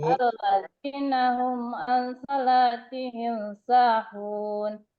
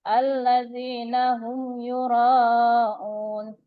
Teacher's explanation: cara membacanya dengan jelas di bibir dan mulut tertutup tanpa dipanjangkan agar lebih jelas. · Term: izhar safawi